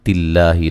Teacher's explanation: یا اہل الکتابی مد جائز ہے، تا مد اصلی ہے، لم تکفرو را کو موٹا ادا کریں گے، وہ مدہ ہے، بی آ یا مد اصلی ہے دونوں جگہ، تلہ لفظ اللہ کو باریک پڑھیں گے، اس سے پہلے زیر ہے